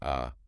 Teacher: So technically it's a long open back unrounded vowel.